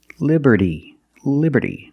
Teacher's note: that T in liberty is between vowels, so it's pronounced like a fast D.